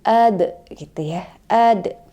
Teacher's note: Nah sekarang ini dia berada di tengah-tengah ayat gitu ya makanya disebut dengan qalqala sugro qalqala kecil jadi memantulnya hanya sedikit aja